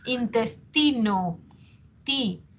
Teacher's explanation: ti, es la sílaba tónica